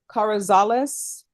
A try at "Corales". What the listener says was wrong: Corales. Keep adding a lot syllables.